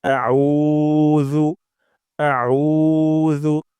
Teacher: করব যেবার আগা সামনের উপরে দুই দাঁতের আগা থেকে আউজু এবং উতে অবশ্যই অবশ্যই এক আলিফ টান দিব অর্থাৎ দুই সেকেন্ড পরিমাণ লম্বা করব